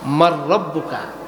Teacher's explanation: আরবি কোরআনের গ্রামার অনুযায়ী মান রব্বুকা হয় না, হয় মার রব্বুকা। এখানে নুন সাকিনের পরে ইদগাম হয়েছে, ইদগামের অক্ষর র এসেছে, এই জন্য নুন সাকিনকে মাইনাস করে দিয়ে রকে ধরলে মার রব্বুকা হয়